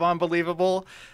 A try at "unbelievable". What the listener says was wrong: You say unbelievable really weird. There's no O in that.